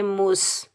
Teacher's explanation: میم کے اوپر پیش، میم کو ہم سین ساکن کے ساتھ ملائیں گے، بغیر کھینچے پڑھیں گے، درمیان میں حمزۃ الوصل ملانے کی صورت میں ختم ہو جائے گا۔ سین سختی اور سیٹی والا حرف ہے، یہاں ہم سیٹی کی آواز نکالیں گے